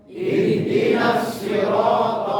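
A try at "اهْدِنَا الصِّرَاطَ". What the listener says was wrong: Ya, huruf shad juga ya. Ihdinas sirata. Kadang huruf shad itu kadang jadi huruf sin, jadi ditukar dengan huruf sin. Ya, jadi ini salah. Kalau huruf sin itu beda riwayatnya. Kan ini riwayat Hafs an Asim, tapi di sini di huruf sin beda riwayatnya. Riwayat Al-Bazzi, Ali bin Kathir Al-Makki.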